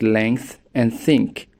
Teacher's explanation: pronounces the Tha sound in words like length and think with the tip of the tongue touching behind the top front teeth